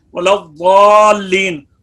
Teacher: ضاد حروف مستعلیہ میں سے ہے، پر ہے، یہاں پر بھی لام کو باریک پڑھنا ضروری ہے